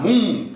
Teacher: pronúncia brasileira aí vai simplesmente nasalizar o U